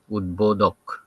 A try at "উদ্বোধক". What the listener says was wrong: না দক নয়, ধক, না উদ্ভো নয়, উদ্ভো। প্রথমটা অল্প প্রাণ, পরেরটা মহাপ্রাণ। প্রথমটা আমরা কম জোর দিয়ে বলবো, পরেরটা বেশি জোর দিয়ে বলবো। একটা হবে কম জোর দিয়ে, একটা হবে বেশি জোর দিয়ে। প্রথমটা কম জোর দিয়ে, পরেরটা বেশি জোর দিয়ে। প্রথমটা কম জোর দিয়ে হবে, উদ্বোধক, উদ্বোধক।